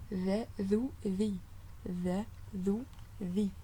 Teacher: Donc le zel, c'est lorsque vous sortez un peu le bout de votre langue et vous posez les incisives par-dessus · Sentez bien le bout de votre langue, c'est l'extrémité de la langue qui rencontre les incisives supérieures